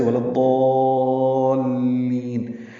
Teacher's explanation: اب اس کو لمبا کریں گے اور لام سے ملا دیں گے، لضال، لام پہ آواز کو روکیں گے، مشدد لام